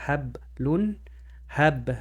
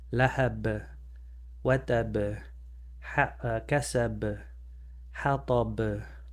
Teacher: since the B closes, you have to close your lips to do it. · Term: qalqalah